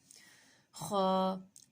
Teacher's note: خا کا مخرج ہے ادنیٰ حلق سے منہ کی طرف والا۔